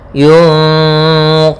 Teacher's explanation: kita samarkan suara nun ke qaf, langsung ke qaf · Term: ikhfa hakiki